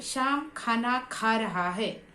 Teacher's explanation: तो इसमें शाम इस शब्द पर ज्यादा बल दिया है, ज्यादा जोर दिया है। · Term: शब्द बलाघात